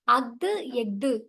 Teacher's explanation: அஃது, எஃது ஆகிய சொற்கள்ல ஆயுத எழுத்து தனக்குரிய அரை மாத்திரை அளவுல முழுமையாக ஒலிக்குது.